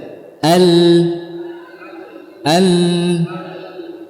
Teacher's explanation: sebagian kita mengucapkan lam dengan Zahrul lisan Al Al ini salah yang benar adalah dengan hafahnya saja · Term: huruf lam